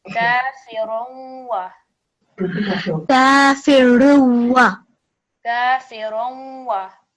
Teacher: So because it's followed by waw mushaddad, if it's waw or ya with a shadda, the way that you're going to read it is you're going to slightly hear the tanween sound. So it's what we call partial assimilation. That means you're going to hear a nasal sound when you join these together.